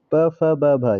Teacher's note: प, फ, ब, भ ये ओष्ठ के द्वारा बोला जाएगा